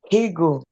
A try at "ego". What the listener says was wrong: you're adding the H again. Hold your breath.